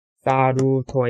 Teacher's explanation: 끝에서 두 번째 오는 모음에, 모음을 강하게 읽습니다